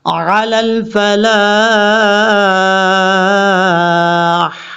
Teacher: لام کے بعد الف ہے، لمبا کرنا ہے، اور لاسٹ پہ ہا بریک ہے. جب یہاں پہ رکیں گے تو لاسٹ پہ ہا کی آواز آئے گی.